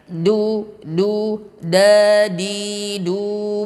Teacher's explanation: dal di sini ujung lidah dengan pangkal gigi seri atas, syiddah